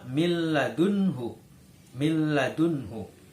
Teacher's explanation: Idgham bilagunnah karena disitu ada nun sukun bertemu dengan lam jadi suara Nun dalam membacanya masuk ke huruf lam